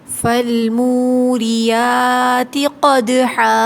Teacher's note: دال پہ قلقلہ ہے، آواز پلٹ کر آئے گی